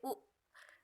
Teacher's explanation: भाषा विज्ञान की दृष्टि से उ के उच्चारण में जीभ का पश्च भाग काम करता है। जब आप बोलते उ तो वो पीछे का भाग काम करता है, अतः यह पश्च स्वर है।